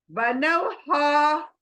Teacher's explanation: सीने में से हा करके एकदम से आवाज सीने में से निकालना है।